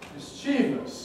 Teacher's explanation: an awful lot of people say mischievous stressing the second syllable